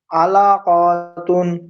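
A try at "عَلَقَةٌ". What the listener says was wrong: ক টান হবে না, আলা কতুন।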